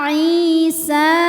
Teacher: ya sukun yang sebelumnya berharakat kasrah cara membacanya huruf Ain panjang dua harakat